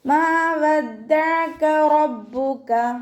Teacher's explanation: റോ ഫത്തഹ ആയതുകൊണ്ട് നമ്മൾ ഉയർത്തിയിട്ട് ഉച്ചരിക്കും